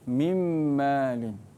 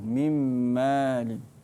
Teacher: Nun mati bertemu dengan mim. Mim kena baca dengan dengung.